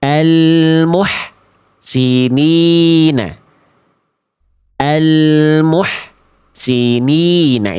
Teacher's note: Gak teman-teman pilih. Karena bunyi hak kecil sukunnya terputus